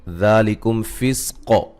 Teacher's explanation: ذالکم فسق ذا مد اصلی ہے، میم ساکن کا اظہار ہے، قاف کو موٹا ادا کریں گے، وقف کی صورت میں قلقلہ کو خوب واضح کریں گے